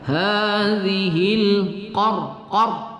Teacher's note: qaf pada pangkal lidah makhrajnya, kemudian ra kita sukunkan, qar berbaris sukun kita baca tafkhim ya, kita baca tebal.